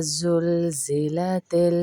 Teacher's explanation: پہلے زال کو ہم نرمی کے ساتھ پڑھیں گے، اور دوسرا جو زا ہے اس کو سختی کے ساتھ پڑھیں گے. زا ہمیشہ سختی کے ساتھ پڑھا جاتا ہے اور زال جو ہے وہ نرمی کے ساتھ.